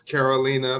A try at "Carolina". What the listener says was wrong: It's actually Carolina. Roll the R.